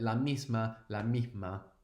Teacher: I should also mention this aspirated s which the singer does and I do it to a degree as well